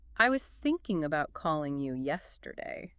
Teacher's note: Thinking, calling, yesterday are the stressed content words.